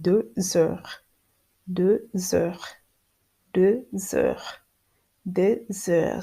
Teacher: It is called a liaison. There is a linking between the final consonant S and the beginning of this vowel E, and the linking give the word a smooth and easy, a little bit of like sexy sounds.